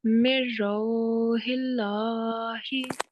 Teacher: Lamul Jalala should be pronounced with thin sound because it is preceded by a mutharrik letter carrying a kasra stroke